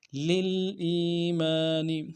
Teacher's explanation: حمزہ کو یا کے ساتھ ملانا ہے، یا مدہ ایک اعتدال میں کھینچیں گے ، میم کے ساتھ الف مدہ ایک اعتدال · لام کو اگلے لام کے ساتھ ملانا ہے، لام ساکن غنہ نہیں ہوگا